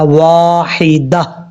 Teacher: وقف کرتے ہوئے تا کو ہا سے بدل دیں گے اور پڑھا جائے گا واحدہ. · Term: ہا کا ساؤنڈ